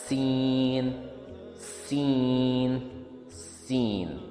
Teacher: یہ ایک sharp sound ہے جو ہوا گزر کر دانتوں اور زبان کے بیچ سے آتی ہے